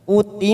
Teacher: huruf mim yang bertasdid, namanya bacaan gunna. Kita tekan 3 ketuk.